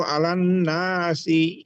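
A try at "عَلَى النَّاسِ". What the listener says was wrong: একটা মাখরাজে একটু প্রবলেম আছে, আয়া আয়া। আপনি আলা বললে কিন্তু দেখেন, এই যে আমি যে আজকে আলোচনায় প্রথমে বলেছিলাম, এক হরফ থেকে আরেক হরফ চলে গেলে নামাজ সরাসরি ভঙ্গ হয়ে যাবে, সেটার একটা প্রসেস হচ্ছে এটা।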